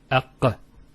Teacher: So the al is where the teeth and the tongue come together, and the qaf, aq, comes from the throat, which is far from the articulation point of the lam. And because of this distance, it's much smoother to say it, because you're going from one articulation point to one that's further down.